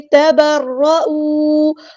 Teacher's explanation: تا اور با باریک، را ہمارا ہیوی لیٹر ہے موٹا پڑھیں گے